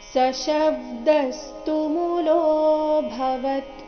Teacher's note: ದೀರ್ಘ ಲೋ ನಂತರ ಅವಗ್ರಹ ಇದ್ದ ಕಾರಣ ಅದನ್ನ ಸ್ವಲ್ಪ ದೀರ್ಘ ಹೇಳಬೇಕು ಲೋ ಭವತ್ ಭ ಮಹಾಪ್ರಾಣ ರಸ್ವ ಇದೆ ಕೊನೆಗೆ ಅರ್ಧ ತಕಾರ ಇದೆ